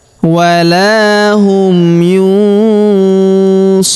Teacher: Huruf ru kita panjangkan 2, 4 atau 6 harokat karena di depan huruf ru terdapat waw sukun sebelum huruf pemberhentian, dan huruf pemberhentian huruf na kita sukunkan atau kita matikan.